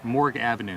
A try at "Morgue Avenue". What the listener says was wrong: It's not Morgan, honey, it's Morgue.